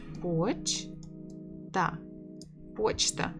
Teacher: 2 syllables. Stress on the first.